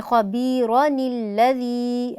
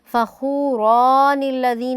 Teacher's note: نون قطنی سے پہلے آنے والے الف کو ہم لمبا کر کے نہیں پڑھیں گے، اس سے پہلے اگر الف مدہ آ رہا ہے تو وہ مدہ نہیں ہوگا۔